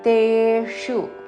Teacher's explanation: తేషు మూర్ధన్య షు హ్రస్వము